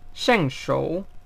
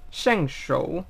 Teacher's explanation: Primero baja y después baja y sube.